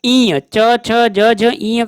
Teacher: च, छ, ज, झ, ई का उच्चारण स्थान तालु से होता है। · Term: तालव्य व्यंजन